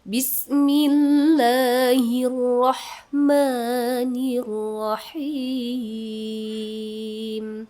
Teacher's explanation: Nada yang pertama naik, nada yang kedua datar. Nada yang ketiga turun. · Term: rumus nada